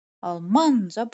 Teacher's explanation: Almanca burada da vurğu ikinci hecadadır.